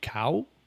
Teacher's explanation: I could say cow, which is a rising tone. There's a falling tone, which is cow.